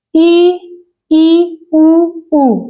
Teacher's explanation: जिन स्वरों के उच्चारण में मुख द्वार लगभग बंद रहता है उसे हम कहते हैं संवृत मतलब क्लोज